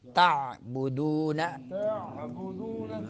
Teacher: عین کو درمیان حلق سے ادا کرنا ہے